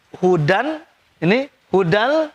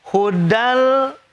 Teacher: Dan cara bacanya gak boleh pakai dengung, harus cepat. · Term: idgham bila guna